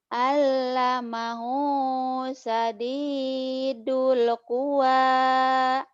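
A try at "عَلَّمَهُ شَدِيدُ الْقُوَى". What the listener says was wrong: Kangen sama Bu Rehan nih kayaknya shinnya ya. Nggak keluar. Shin. Ain. Ain. Ain. Ain.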